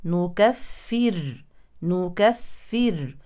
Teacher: الراس ساكنه سكونا اصليا مسبوقا بحرف مشدد بالكسر اذا هي واصلا او وقفا مرققه